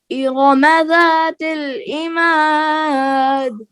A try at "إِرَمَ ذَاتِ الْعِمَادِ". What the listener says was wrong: عین نہیں کلیئر ہوا. پھر پڑھیے.